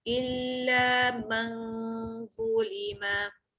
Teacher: keluarkan lidah, huruf dha tebal